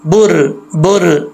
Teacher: बा के ऊपर पेश है तब भी रा मोटा पढ़ा जाएगा, बा पेश रा बुर बुर, मोटा पढ़ा जाएगा।